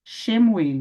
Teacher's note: Shiva, no início da palavra, ele é vocálico. Então, tá aqui, ó, Shin, eu translitero como SH, mais um pequeno E do Shiva.